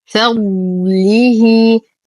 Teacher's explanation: ننتبه كثيرا لحرف الضاد الساكنة مع إعطائه الاستطالة والتفخيم والإطباق وبقية الصفات